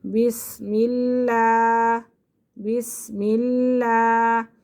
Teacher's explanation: لفظ اللہ کی لام سے پہلے اگر زیر آ جائے تو لفظ اللہ کی لام کو باریک پڑھتے ہیں